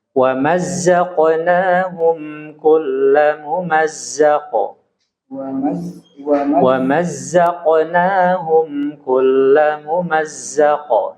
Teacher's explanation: Huruf mim di sini harus diidharkan. Jadi nggak boleh dipercepat. Diperjelas ya.